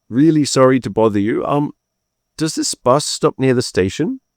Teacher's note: Notice the polite questioning rising intonation.